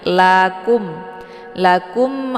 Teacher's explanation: di antara huruf wau dan lam ini merupakan Alif ziadah ya Jadi alifnya tidak ada fungsinya jadi tidak dibaca Jadi bukan Akum ya ini lakum lakum a ada mim sukun